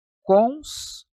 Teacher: Um ditongo que começou com uma vogal e diminuiu para uma semivogal. Ele é um ditongo decrescente.